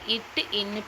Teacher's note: நடுனா நடு அன்னத்தை பொருந்த பிறக்கும் எழுத்துக்கள் எதுன்னு கேட்டாங்கன்னா இச் இஞ்சு. அதுவே நாவின் நுனி மேல்வாய் நுனியை பொருந்த